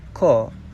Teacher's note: Perkataan ke ini berakhir dengan vokal tengah E. Dalam dialek Kelantan, perkataan ke ini akan berubah huruf vokal akhirnya dan disebut ko, iaitu vokal belakang separuh sempit O.